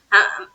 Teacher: آگے بِآیاتِنَا، بِآیاتِنَا، بِآیاتِنَا، مطلب آ کو بھی کھینچنا، یا کو بھی کھینچنا، اور نا کو تو کھینچنا ہی کھینچنا